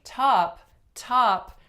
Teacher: when I say top top there's a lot of aspiration so acoustically they are very very different sounds but like I